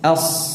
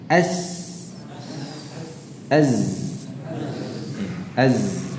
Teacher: suara yang tajam karena dihasilkan dari aliran dari tempat mengalir yang sempit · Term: safir